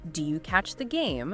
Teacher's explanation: raising your pitch slightly on questions like, do you catch the game? It makes it sound more like a question.